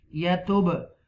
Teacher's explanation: This is a qalqala letter. You will read with the echo sound, bouncing letter. Ba is bouncing letter.